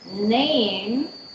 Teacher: the alveolar nasal in name